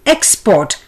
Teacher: The noun would be export. The stress being on EX.